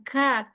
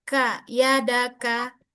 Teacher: kaf itu memang punya sifat hamas, tapi saat dia harokat, dia kurangi hamasnya, dia tidak berlebihan, bukan ka, tapi ka, yadaka, segitu aja.